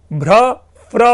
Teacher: भ्र फ्र लेबियल वर्ण है, ओष्ठ्य वर्ण में ही परिवर्तन हो रहा है, भ्र फ्र हो रहा है।